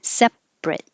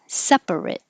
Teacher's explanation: the adjective has two syllables separate we just drop the middle a